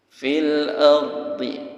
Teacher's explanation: Tafkhim, tebal. Seperti ada huruf W-nya, tapi jangan terlalu, ambil sedikit saja.